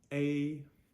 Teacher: It's just a long A said with the first tone.